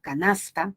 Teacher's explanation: te das cuenta que la sílaba tónica es la penúltima